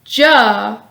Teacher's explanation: the sound ja is voiced meaning your vocal cords vibrate when producing the sound the tip of your tongue starts at the roof of your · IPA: /j/